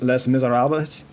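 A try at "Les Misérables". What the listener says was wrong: You said less. So, yeah. Les Miserables. I'm pretty sure is that first one.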